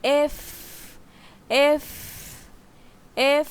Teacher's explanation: উপরে দুই দাত নিচের ঠোটের সাথে লাগাতে হবে। এফ এফ উচ্চারণ করার সময় মাঝখান দিয়ে বাতাস বের হবে।